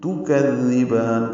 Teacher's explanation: کذبان کاف کو نرمی سے پڑھیں گے، زال سے ملائیں گے، زال کو نرمی سے پڑھیں گے، زبان کی نوک سامنے کے دانتوں کے اندرونی کناروں سے لگائیں گے